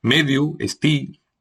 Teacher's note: vocales finales I, U, E o E muy cerradas